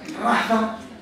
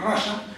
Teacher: la interdental fricativa sorda